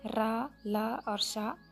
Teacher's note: दंत मूल में आपको लिखना है रा, ला और शा